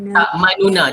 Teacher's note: Bila kita memilih bacaan raum, kita izhar lah sebab kita jelaskan bunyi nun, cuma kita pendekkan baris dia jadi 1/3 je. Tak manuna, dia tetap bunyi nu tau, tapi orang yang teliti baru dia boleh dengar kataan nu.